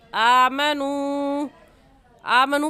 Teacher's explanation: اور قاعدہ ہے کہ حروف مدہ کے بعد حمزہ اگلے کلمے میں آ جائے تو اس مد کا نام ہوتا ہے مد منفصل اور مد جائز. اور اس مد کو ہم 3 الف کے برابر کھینچیں گے، اس سے کم یا زیادہ نہیں کھینچیں گے